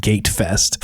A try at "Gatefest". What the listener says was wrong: You gotta pronounce the T.